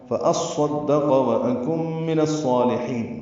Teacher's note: واو ہونٹوں کی نا تمام گلائی سے ادا ہوتی ہے، حمزہ اقصی حلق سے بالجہر ادا ہوتا ہے، کاف باریک ہے.